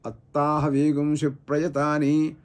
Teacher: హల్లు లేకపోయినా కూడా తకారానికి ద్విత్వం చెప్పేసాడు మనమందరం కూడా అత్తాహ వేగం శిప్రయతాని అని తకారం రెండు తకారాలుగా మనం ఉచ్చరిస్తున్నాం